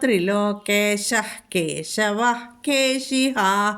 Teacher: അതുകൊണ്ട് വിസർഗം കഴിഞ്ഞിട്ട് കേശവൻ എന്ന് വന്നതുകൊണ്ട് അത് ജിഹ്വമൂലിയാണ്. വിസർഗസ്ഥാനത്ത് ഹ എന്ന് ഉച്ചരിക്കണം. വിസർഗത്തിൻ്റെ പകുതി ഹ.